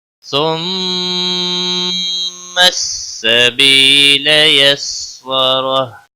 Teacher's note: سبی یا مدہ ہے ایک الف کے برابر کھینچ کر پڑھیں گے